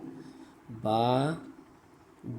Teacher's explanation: با دونوں ہونٹوں کے اندرونی تری کے ملنے سے ادا ہوتا ہے۔